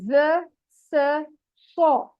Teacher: ज में buzzing sound आती है, स और सौ सीटी वाले हरूफ हैं